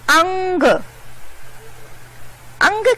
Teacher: अनुस्वार को जब हम उच्चारण करते हैं तो हमारे नाक से ध्वनि निकलती है।